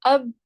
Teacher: دونوں ہونٹ آپس میں مل گئے، اس کا مطلب ہے کہ با جو ہے وہ ہونٹوں سے ادا ہوتا ہے